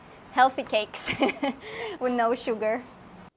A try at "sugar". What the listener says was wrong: The word is not pronounced sugar. It's pronounced sugar. Don't use a long oo like food and moon. Use the short like good and book. Sugar. Example, soda has a lot of sugar. Not sugar, but sugar. Soda has a lot of sugar.